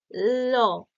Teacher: জিভের আগাটা উপরে ঠেকছে, কিন্তু দুই পাশটা ফাঁক থাকছে, ল, তাই না? জিভের দুই সাইডটা ফাঁক থাকছে, অর্থাৎ যে শ্বাসবায়ুটা নির্গত হবে সেটা জিভের দুই পাশ দিয়ে বার হয়ে যাচ্ছে, তাই এটা পার্শ্বিক বলাই হয়েছে যদিও।